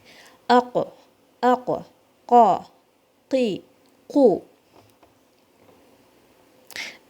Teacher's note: The makhraj of qaf, it comes from the deepest part of the tongue. Okay, it is close to the roof of the mouth. The back tongue is raised and the sound is heavy.